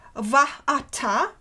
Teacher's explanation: consonantal glottal stop, quite indistinct probably phonetically, which prevented the merger of the two vowels into one long A, and which forms the hiatus and is responsible for the trisyllabic metrical value of the word vatai, the dative singular.